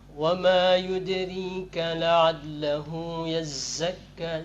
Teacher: zainya juga ditambah angin sedikit lagi sehingga dia jelas perbedaan antara zai dengan za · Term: makhraj zai